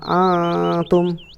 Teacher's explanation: Karena di sini ada nun mati bertemu huruf ta. Cara membacanya adalah samar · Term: ikhfa hakiki